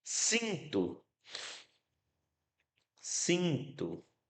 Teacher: O I eu escuto nasalizado